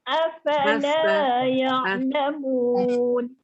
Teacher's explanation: Bila kita sebut afa je, dia akan keluar angin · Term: huruf fa